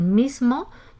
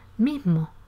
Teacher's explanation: un hablante con aspiración de la S implosiva